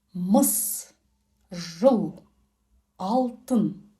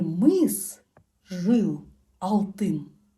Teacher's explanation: Твердый сверхкраткий гласный звук отличается от русского тем, что произносится этот звук тверже и более кратко.